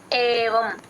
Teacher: ఏ అచ్చండి కంఠంలో నుంచి రావాలి ఏవం ఇంగ్లీష్ లెటర్ లో ఫస్ట్ ఏ ఉంటుంది కదా అలా చెప్పాలి ఏవం